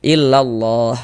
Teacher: huruf lamnya lafaz Allah nih kita baca tebal kita baca tabkhim. Nah, sehingga ini kita baca illallah seperti itu. · Maka lafaz Allahnya, huruf lam jalalahnya tuh, huruf lam yang di tengahnya nih. Huruf lamnya lafaz Allah nih kita baca tebal, kita baca tabkhim.